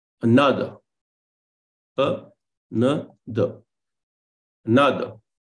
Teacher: Then Amphibrach, you have unstressed followed by stress and then unstressed.